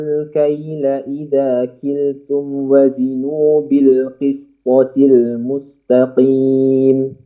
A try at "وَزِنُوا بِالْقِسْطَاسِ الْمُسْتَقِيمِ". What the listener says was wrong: Ulangi panjang-panjangnya. Qisṭas. Panjang.